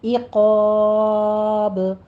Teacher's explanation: عقاب میں عین وسط حلق سے کسرہ کی آواز باریک رکھتے ہوئے عقاب، قا کو آپ پر پڑھیں گے، رفع مستعلیہ ہے، ساتھ یہ الف مدہ بھی پر ہو جائے گا